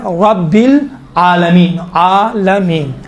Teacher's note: رب را کو چونکہ زبر ہے موٹا تلفظ کیا جاتا ہے